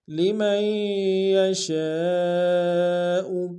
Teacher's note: الف مدہ کے اوپر مد متصل ہے، کم سے کم 3 انتظار میں کھینچیں